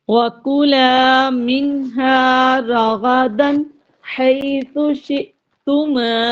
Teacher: اب آپ دیکھ رہے ہیں کہ نون ساکن کے بعد ہا آ رہا ہے تو یہاں اظہار ہو رہا ہے، اور آگے راغدن حیث شئتما، اور تنوین کے بعد ہا آ رہا ہے تو یہاں بھی اظہار ہو رہا ہے، غنہ نہیں کریں گے